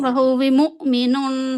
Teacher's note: आपका हमजा जज़म वाला जो है इसके ऊपर झटका लगना चाहिए